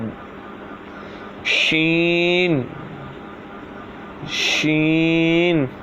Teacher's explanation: شین جو ہے زبان کے درمیان اور تالوں کے درمیان سے ادا ہوتا ہے